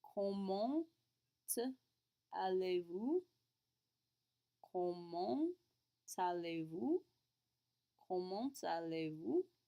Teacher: Even with the liaison there, because comment ends in a T and aller begins with an A, we still have to hit the nasal.